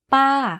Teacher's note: focus on pitching your voice to go slightly up first and then to fall down at the end of the syllable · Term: falling tone